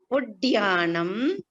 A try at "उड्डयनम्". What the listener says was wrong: Uddayanam. This one is Uddayanam, Dakara and Dakara.